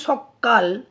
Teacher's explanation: মাত্র ক ব্যঞ্জন ছিল কিন্তু যখন উচ্চারণ করা হচ্ছে সকাল তখন ক টাকে ডবল বার উচ্চারণ করা হচ্ছে মানে দুবার একসাথে উচ্চারণ করা হচ্ছে তাই এটা হচ্ছে ব্যঞ্জন দীপ্ত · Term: ব্যঞ্জন দ্বিত্ব